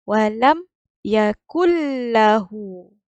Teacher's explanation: nun ni kita tak bunyi. Kita baca walam yakul. Terus masuk lam.